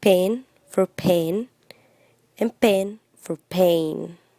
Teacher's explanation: E for pen and A for pain are pronounced with the Spanish vowel sound E, resulting in words like pen for pen and pen for pain